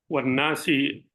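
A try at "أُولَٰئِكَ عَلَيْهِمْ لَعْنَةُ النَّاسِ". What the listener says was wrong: Jangan pakai wow. Iya, ulaika alaihim laknatun nasi.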